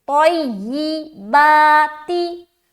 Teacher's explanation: با میں کھینچ رہے، اس کے بعد تا کو جلدی ادا کر رہے